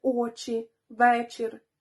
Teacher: хіба і не робить цей звук м'яким спитайте ви ні насправді звук ч перед і стає лише напівпом'якшеним